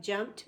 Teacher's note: P doesn't vibrate, so it's T